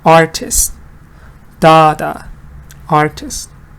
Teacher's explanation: You just add ist to it, and then it's pronounced artist. So where's the stress? Again on art, on the important word.